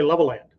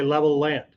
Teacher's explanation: So the L gets held a little bit longer